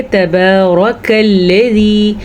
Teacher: الذی میں زال جو ہے یہ باریکی کے ساتھ، نرمی کے ساتھ پڑھی جائے گی